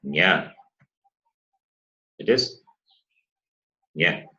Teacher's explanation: the last letter, which is nasal as well as palatal, that is nya.